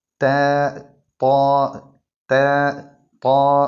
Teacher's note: ത്വാ താ ത്വാ രണ്ട് അക്ഷരങ്ങൾ ഒരേ മഹ്റജിൽ നിന്നാണ് ഇവ രണ്ടും പുറപ്പെടുന്നത് നാവിന്റെ തല മേലെ മുൻപന്തിന്റെ മുരട്ടിൽ വെച്ചുകൊണ്ടാണ് ഈ രണ്ട് അക്ഷരങ്ങളും മൊഴിയേണ്ടത്